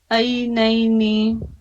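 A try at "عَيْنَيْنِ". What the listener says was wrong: عین نکالنے کی کوشش کیجیے، عینینی،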